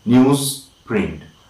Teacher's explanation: this voiced z is replaced by voiceless s · the z sound is replaced by s under the influence of the p sound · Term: assimilation